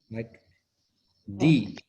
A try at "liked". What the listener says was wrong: No. It is T.